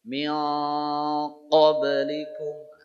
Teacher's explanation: Oleh karenanya kalau nanti jadi ikhfa, pada bunyi ikhfa tulisannya min qablikum dibaca min qablikum. Maksudnya suara an dibaca ke tempatnya qaf jadi dia berubah. An jadi ang.